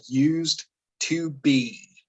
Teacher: that D and T sound next to each other, we blend it together